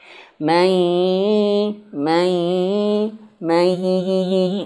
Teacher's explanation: Harusnya wajibnya dia sengau atau masuk hidung, gunnah.